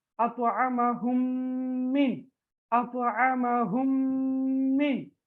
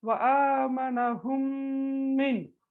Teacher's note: சுகூன் செய்யப்பட்ட மீமுக்கு பிறகு இன்னும் ஒரு மீம் வந்தா அதை இணைத்து ராகம் எடுத்து ஓத வேண்டும்